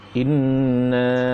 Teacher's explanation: Kemudian ada mak jais, kan? Na panjang. Berapa harakat dia? 4 atau 5 harakat. Inna, panjangkan, usahakan panjang, kan?